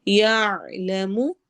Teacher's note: ہم نے ہیوی کر کے پڑھنا ہے، موٹا پڑھنا ہے، یعلم عین حروف حلقی میں سے ہے، آواز کو ہم حلق میں ٹھہرائیں گے